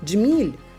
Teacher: дж - африкат, тому це буде -1, тобто звуків на один менше. М'який знак звукового вираження немає, тому звуків ще на один менше.